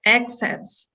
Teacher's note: the stress syllable in access is the first one